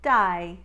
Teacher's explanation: the a diphthong for day will need to become i as in dai